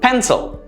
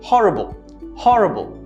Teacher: words that use i but have the schwa sound replacing it instead